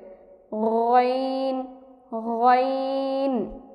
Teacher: গইনের মাখরাজ হলকে শেষ হতে